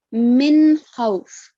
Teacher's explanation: whenever noon sakin is followed by throat letters, the sound of noon is manifested